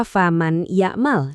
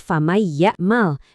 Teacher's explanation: Yang benar, suara nunnya lebur ke ya sambil didengungin. · Idgham biguna. Ini yang punya ciri khas suara dengung yang khas itu loh, yang bunyinya lembut dari hidung.